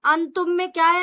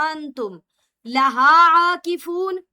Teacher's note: نون ساکن کے بعد تا ہے، اس لیے اخفا ہوگا، نرمی کے ساتھ پڑھا جائے گا